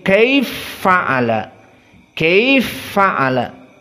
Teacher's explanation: maka sama-sama fa kaifa dan fa'ala dan keduanya dalam keadaan berharakat kaifa fathah fa'ala fathah maka dijadikan idgham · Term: idgham alkabir, idgham al-kabir